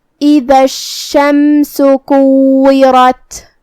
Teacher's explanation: آخر میں جو کہ تا پہ جزم ہے تو ہمیں تا کو ہمس سے ادا کرنا ہے. ہمس کا معنی ہے حرف کی آواز ایسے کمزور ہو کہ اس میں پستی پائی جائے.